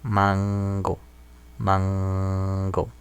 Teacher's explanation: No es alveolar, sino es velar.